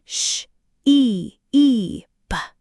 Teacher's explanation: Your lips should be spread as if you're about to smile, but not tense. Feel the vibration in your throat. It's a voiced sound. Critically, it's a longer sound.